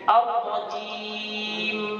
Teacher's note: Ar-Rajim. Terakhir huruf mim itu memiliki sifat tawassul, harus mengalir sedikit.